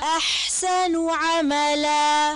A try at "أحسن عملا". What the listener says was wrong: نون کی پیش کو اور گول کریں اور ہونٹوں کو گول کریں